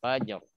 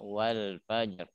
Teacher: Kalau dia sukun ketemu wakof nggak bisa didefinisikan dia apa hukumnya ya. Karena dia didahului fathah maka dia menjadi tebal